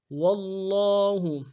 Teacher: واللہ، واو کو لفظ اللہ کے لام کے ساتھ ملانا ہے، لفظ اللہ کے لام کے اوپر کھڑا زبر ہے، ایک انداز میں کھینچیں گے، تشدید زور دیں گے